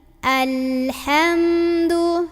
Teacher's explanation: mim bibir atas bibir bawah ketemu jangan dulu dilepas sebelum ngucapin huruf d jadi jangan alhamdu tapi alhamdu nah Biarin masih ada aliran mim